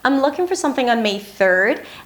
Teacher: So she stresses the word looking, she starts again high in pitch at the beginning of the sentence 'I'm looking for something on May 3rd.' And then she goes up in pitch at the end.